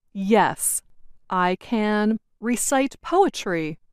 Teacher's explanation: the more wanted to emphasize or make her meaning clear, the slower she said the word can